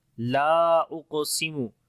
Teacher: لام کو لمبا کریں گے، یہاں پر الف مدہ ہے، الف سے پہلے زبر ہے، اس وجہ سے لمبا کریں گے